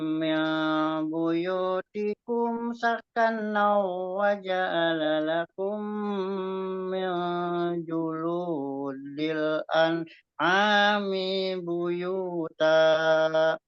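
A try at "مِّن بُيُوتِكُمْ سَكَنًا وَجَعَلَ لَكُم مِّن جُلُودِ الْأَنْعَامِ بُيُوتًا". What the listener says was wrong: Ini nambah mi-nya, nambah panjang. Al-an'ami buyuta. Mi-nya nambah lagi. ini buyuta itu ikhfa lagi. Buyuta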